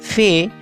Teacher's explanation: لب دنتی، اس میں نچلے ہونٹوں سے اوپر کے دانتوں پر ہوا کو روکا جاتا ہے